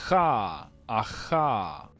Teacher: um som que é velar, mas é um som fricativo, esse som de r